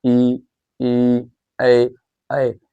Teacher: जो जीभ के अगले हिस्से से बोले जाए उन्हें क्या कहेंगे अग्र स्वर · अग्र स्वर जो जीभ के अगले हिस्से से बोले जाए